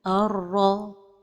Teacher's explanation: Seulement cet idgham aussi se fait sans ghunna.